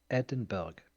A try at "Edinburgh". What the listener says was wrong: No, you don't pronounce the G. No, I don't think you pronounce the G.